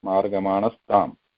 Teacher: So whereas in margamanaha plus tam, that visarga sound is changing to sa, margamanas tam.